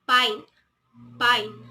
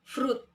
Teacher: there was no evident vibration on the vocal cords. Hence, these are voiceless consonants.